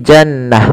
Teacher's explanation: ketika dia dimatikan atau diwakafkan, dia rubah atau dirubah menjadi huruf ha sukun, maka menjadi jannah, bukan jannat tapi jannah. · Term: tak marbutoh